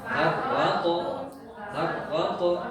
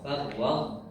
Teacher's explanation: Tapi ini kan nggak ada tanda sukun, jadi bacanya ya huruf to dibaca sukun tanpa qalqalah. Jadi matinya dia to, farwaq, tepat, farwaq tun. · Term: idgham naqis